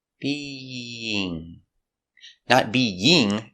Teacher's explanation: We have two vowels together, being. We have the y sound in the middle to connect the vowels.